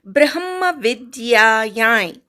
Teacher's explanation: ब्र वर आघात आणि वी वर आघात, अनुस्वाराचा य, नाकातनं यचा उच्चार करायचा.